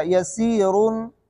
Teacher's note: اس پر اگر وقف نہیں کریں گے تو ایک الف مد ہوگا